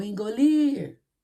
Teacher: viu que a tia falou ir mas demorou mais nessa sílaba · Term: oxítona, sílaba tônica